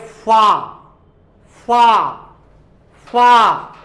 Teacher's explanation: हवा की रगड़ हो रही है, बार बार हवा जो होती है टकरा रही है, घिस रही है, संघर्ष कर रही है